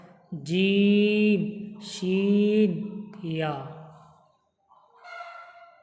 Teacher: শিন, ইয়া জিভের মাঝখান এবং তার বরাবর উপরে তালুর সাথে লাগিয়ে উচ্চারিত হয়।